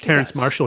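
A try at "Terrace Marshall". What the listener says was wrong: Listen, just say minus the N every time you say his name and you'll be fine.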